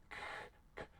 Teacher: With the k, it represents a non-nasal sound, so it's telling us the nasal passage is closed. · the k part, I don't have vibration there. So it's a voiceless sound